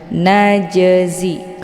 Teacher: yang terdapat di pertengahan ini dinamakan dengan Qalqalah Sura cara bacanya huruf jimnya dipantulkan dengan pantulan ringan · dipantulkan dengan pantulan ringan. Najzi, keluar bunyi j.